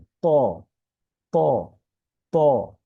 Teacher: বাংলায় তর মতো, তবে এই হরফটি উচ্চারণের ক্ষেত্রে একটু মোটা হবে।